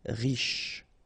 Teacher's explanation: final E not really pronounced, so sh is the last sound